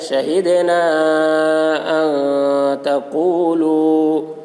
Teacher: مد منفصل کو 3 یا 4 الف کے برابر کھینچ کر پڑھیں گے. ایک الف کے برابر کھینچ کر پڑھنا بھی جائز ہے.